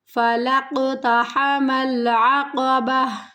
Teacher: قلقلہ ہوگا، قاف کی آواز کو تھوڑا سا ہلا کر پڑھنا ہے۔